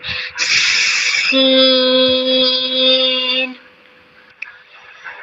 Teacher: سین جو ہے یہ سٹی والا حروف ہے، ٹھیک ہے، سٹی کی طرح ہم اس کو نکالیں گے، ٹھیک ہے، ایسے شروع کریں گے اور پھر اس کو مکمل کریں گے۔